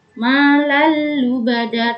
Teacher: Malal lubada seperti tadi anlan, yaitu dihukumi dengan idgham bila gunnah, yaitu dengan memasukkan tanpa mendengung. Malal lubada tanpa ditekan, tanpa dengung.